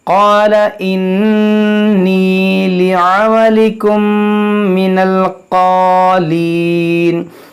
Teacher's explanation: میم ساکن کے بعد میم ہے تو یہاں پر بھی ادغام شفوی کریں گے یعنی غنہ کریں گے